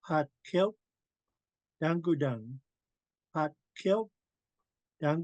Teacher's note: the W is silent so we want to say kill and then just round our lips